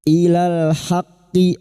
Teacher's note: lam takrif yang bertemu dengan huruf ha idhar qamariah